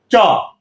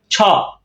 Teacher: উচ্চারণটা আপনাদের বলি কিভাবে এ উচ্চারণটা হবে অগ্রতালু তার মানে জিহ্বাটা জিহ্বার সামনের অংশ পুরোটাই তালুতে লাগবে এজন্য বলা হচ্ছে যে অগ্রতালু দেখেন জীবের আগাটা তালুতে লাগবে আমি